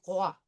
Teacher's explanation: So we have the French R followed by the wa. So it's going to be roi.